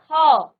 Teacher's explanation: जुड़ा होता है इसलिए इसका उच्चारण आप करते हैं ख तो जब आपने ख बोला तो पीछे से आपका अ आ रहा है